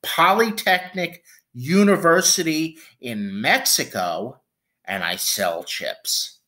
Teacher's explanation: you go up up up and then walk it down the steps